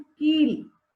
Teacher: जब हम कील बोल रहे हैं, कील, तो की थोड़ा लंबा समय लग रहा है